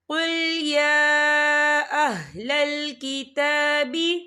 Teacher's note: یہ دیکھیے کل یا کے پر کھڑی حرکات ہے اور اس پر چھوٹی سی مد بھی ہے، تو ہم اسے 4 حرکت کے برابر کھینچ کے پڑھیں گے